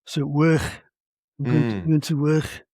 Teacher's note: one of the characteristic features is the fricative realisation of what for me is final k, work. So work, I'm going to work, with a quality of velar fricative that I find very similar to Swiss German, in fact.